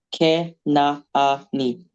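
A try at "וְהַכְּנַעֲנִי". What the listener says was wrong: Yeah. Az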